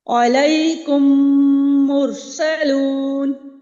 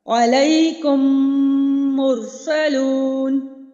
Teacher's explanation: دو ہی حرف یاد رکھ لیجئے کہ میم ساکن کے بعد جب میم آئے یا میم ساکن کے بعد با آئے تو وہاں پہ جو ہم میم کی ادائیگی کریں گے وہ غنہ کے ساتھ ہوگی، جیسے کہ دیکھیے علیکم مرسلون، یہاں میم ساکن کے بعد میم آ رہا ہے تو میں نے کیا کیا، یہاں پہ ایک الف کے برابر غنہ کیا